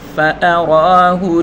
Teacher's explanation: را کے اوپر کھڑی حرکت ہے، اس کو ایک الف کی مقدار کھینچ کر پڑھیں گے۔ فَأَرَاهُ ہا لام پیش ہل، یعنی ہا اور لام دونوں کو ملا کر پڑھیں گے۔